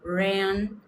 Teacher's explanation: quando começa com R no inglês, faz aquele R retroflexo